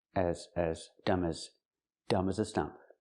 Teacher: As is not stressed. It's not an important word. So, we don't say as with the a sound like black cat. It's more closed.